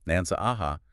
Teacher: It adds a hamza, a glottal stop,